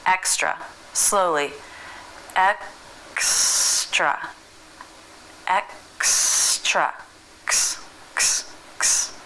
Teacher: bring the back of the tongue up to the soft palate let air build up and release it by bringing the back of the tongue down let's put it into the word extra slowly X extra X